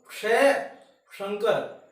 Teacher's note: ये ध्वनि बोलते समय जीभ है उलटकर पैलेट की तरफ जाएगी, T3 से बैक वाला माउथ होल की तरफ जाती है।